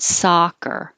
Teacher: This is ah with the mouth open, lips straight